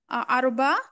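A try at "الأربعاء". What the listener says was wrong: अरबिया, अरबिया, अरबा नहीं, अरबिया।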